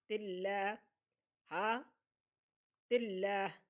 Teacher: تو یہاں پر لفظ اللہ کے لام سے پہلے لفظ کے نیچے زیر ہے تو اللہ کو پور نہیں پڑھیں گے، باریک پڑھیں گے. تلہ ہا تلہ، وقف کریں گے تلہ، ہا کو ساکن کر دیں گے، وقف مطلق ہے.